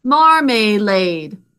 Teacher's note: 3 syllables. We say marmalade because that middle syllable is unstressed